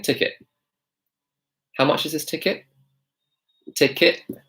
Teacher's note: now in my British accent I actually dropped the T I dropped the T so instead of saying ticket I'm saying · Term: glottal T